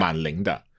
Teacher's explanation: man and only man will change to the third tone if it comes before a character with a second tone. I'm not saying only for this character.